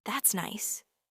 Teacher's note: Gentle fall at the end.